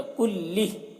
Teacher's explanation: जब ठहरेंगे तो हा की जो खड़ी ज़ेर है ये सुकून से बदल जाएगी, तो कुल्लिह हो जाएगा, कुल्लिह। हा अंतुम उलाई तुहिब्बूनहुम वला युहिब्बूनकुम वतुमिनून बिलकिताबि कुल्लिह वइज़ा लक़ूकुम क़ालू आमन्ना।